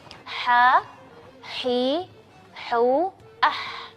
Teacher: Kalau ha di bagian tengah-tengah tenggorokan dan suaranya tipis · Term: huruf ha